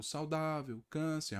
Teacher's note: não é a última é a penúltima sílaba tônica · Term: paroxítonas